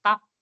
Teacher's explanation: é quase um a que não aparece